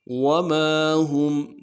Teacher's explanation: میم کے ساتھ الف مدہ ایک الف مدار میں کھینچنا ہے۔